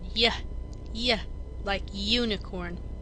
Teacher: when we say the letter name U it starts with the consonant Y sound